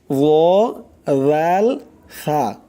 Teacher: জিহ্বার আগা সামনের উপরের 2 দাঁতের আগার সঙ্গে লাগাইয়া 3টি অক্ষর উচ্চারণ হয়